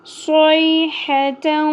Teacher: یا ساکن حرف لین ہے نرمی کے ساتھ ادا ہوگا. ہا وسط حلق سے ادا ہوگا